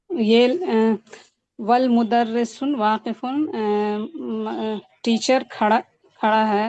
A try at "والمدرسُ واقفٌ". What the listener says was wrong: والمدرس نہیں ہے، والمدرسو ہے. والمدرسو.